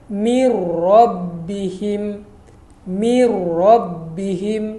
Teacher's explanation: Mir rabbihim, mir rabbihim. Nun mati kita idghamkan kepada huruf ra, masukkan kepada huruf ra. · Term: idgham bila gunnah